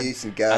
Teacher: Goose and goat can both be very fronted